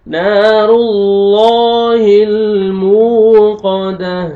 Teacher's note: تا کو ہمیں چینج کرنا ہے وقف کی صورت میں اور لاسٹ میں ہا کا ساؤنڈ آنا چاہیے